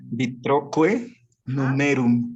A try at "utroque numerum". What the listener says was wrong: No numerum, porque si dijera numerum, estaríamos considerando que aquí tiene la marca y ahí no va la marca. Entonces me llevo el acento hasta la sílaba anterior.